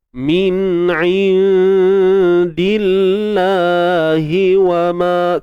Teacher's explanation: Kalimah Allah kita baca dengan nipis, tarqiq.